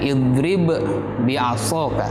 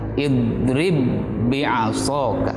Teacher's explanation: melebur ba yang pertama ke ba yang kedua, sehingga hanya satu suara.